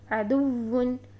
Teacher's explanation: اگر ہم عدوٌ میں ٹائم لگاتے اور اس کو اس طرح سے پڑھتے عدوٌ تو یہ غلط ادائیگی ہوتی۔ ہمیں اس کو دال کی پیش کو فوراً واو مشدد کے ساتھ ادا کرنا ہے